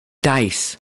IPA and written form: daɪs (dice)